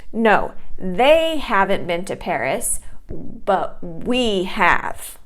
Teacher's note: you're stressing those two pronouns, they and we, it's because you want to express that something was incorrect or to put emphasis on something that is comparing, right?